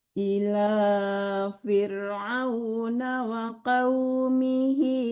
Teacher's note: hi-nya 2 harakat aja, jangan terlalu panjang.